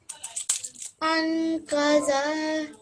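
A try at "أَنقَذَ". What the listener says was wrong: Yeah, but don't say it like za, like this one. Don't say it so sharply. Make it a little bit softer, rounded. Anqada.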